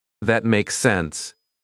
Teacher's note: Feel how the voice falls at the end. It feels complete.